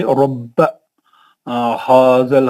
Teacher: बा 2 दफा पढ़ेंगे, सख्ती के साथ पढ़ेंगे।